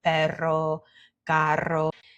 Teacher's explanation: that's one thing that's always rolled, is our double R